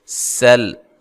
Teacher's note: سین کو باریک سیٹی سے، لام کو ہلانا نہیں ہے